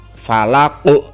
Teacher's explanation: Huruf qaf di situ tercetak biru, artinya itu huruf qalqalah, dia memantul saat dia waqaf.